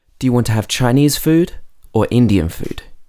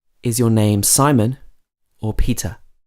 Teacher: normally you use rising intonation for the first one and then falling intonation for the second one